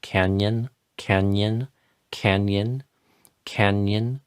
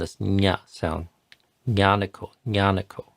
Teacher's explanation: that's very close to a Y, but it's nasalized